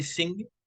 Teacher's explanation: You use the back of your tongue to make the ing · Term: ing sound